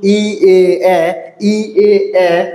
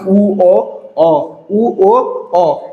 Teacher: ই এ এ সম্মুখ স্বরধ্বনি, আর পশ্চাৎ স্বরধ্বনি উ ও অ